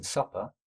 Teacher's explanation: if it's at the start of an unstressed syllable, like in supper, there'll be no aspiration